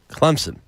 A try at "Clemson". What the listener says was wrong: You add a P. Thompson, Clemson. Don't put a P on it. Don't put the P on it.